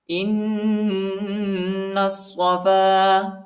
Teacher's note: حمزہ کو نون کے ساتھ ملائیں گے اور غنہ کریں گے، اور نون کو صاد کے ساتھ ملائیں گے۔